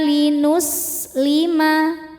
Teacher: Wa umirna linuslima, sinnya berdesis, punya sifat namanya sofir ya, desis seperti suara ular.